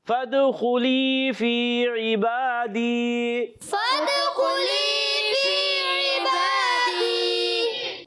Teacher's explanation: فادخلی, یا ساکن سے پہلے زیر ہے, یا مدہ ہوگا. خا کو پر رکھنا ہے, خا حلق کے اوپر والے حصے سے ادا ہوتا ہے · جی ہاں, فی عبادی, فی میں یا مدہ, اس کو بھی ایک الف کھینچنا ہے. عبادی, عین کی زیر کو نہیں کھینچیں گے مگر با پر کھڑا زبر ہے ایک الف کھینچیں گے، دی یا مدہ ہے اس کو بھی ایک الف کھینچیں گے۔